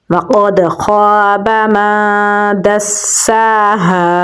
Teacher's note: میم کو نون کے ساتھ ملائیں گے کیونکہ نون کے اوپر جزم ہے، نون ساکن کے بعد حروف اخفا میں سے دال ہے تو یہاں پر ہم اخفا کریں گے، دال کو سین کے ساتھ ملائیں گے کیونکہ سین کے اوپر تشدید ہے، کھڑی زبر ہے تو لمبا پڑھیں گے، ہا کو گلے کے نچلے حصے سے نکالیں گے، آگے الف مدہ ہے تو لمبا پڑھیں گے تو پڑھا جائے گا وَقَدْ خَابَ مَن دَسَّاهَا۔